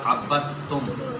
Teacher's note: پہلا متحرک، دوسرا ساکن، تیسرا مشدد۔ ساکن حرف کو اندر سے سکپ کر دینا ہے، یہ عین کے بعد تم سیدھا پڑھا جائے گا